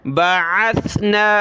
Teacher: سا پر سیٹی کی آواز نہیں آنی چاہیے، سا پڑھیں گے، سین کی آواز نہ آئے